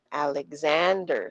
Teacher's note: nagtatagal tayo at lumalakas yung boses natin when we get to the second A sa pangalan niya. Sinestress natin.